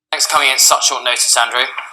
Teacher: there's a link there between coming and in, and also the T sound is dropped on at.